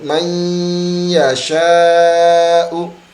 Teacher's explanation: Tetapi hilang ujung lidahnya, maka masuk ke dalam huruf ya. Sisanya adalah dengungan. Maka yang mendengung adalah huruf ya sebagai pengganti huruf nun yang hilang itu, dimasukkan ke dalam huruf ya.